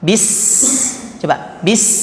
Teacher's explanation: nah Sin itu bunyinya tipis namanya saofir dalam dalam ilmu Tahsin saofir bunyinya tipis tajam